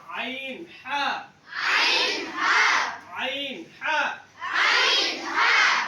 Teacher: হলকের মধ্যখান হইতে দুইটি হরফ উচ্চারণ হয়।